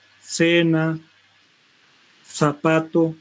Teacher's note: Es otro sonido interdental, ya interviene los incisivos superior e inferior y el ápice de la lengua